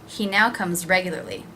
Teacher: there was that pause there where the semicolon is and because of that I didn't link and I didn't drop the H in he